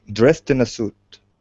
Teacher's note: this is an ed ending it'll be pronounced like a t